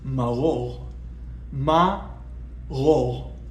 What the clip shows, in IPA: ma'ʁoʁ